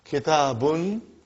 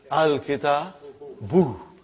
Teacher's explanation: as soon as I put al, like a magic, one vowel sign got dropped. Instead of bun, it became bu.